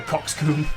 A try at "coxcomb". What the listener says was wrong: Coxcomb. It's comb, isn't it? Not coom.